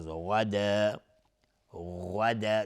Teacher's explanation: غین از حروف استعلاء غلیظ تلفظ میشه. غدا مد عوض از تنوین.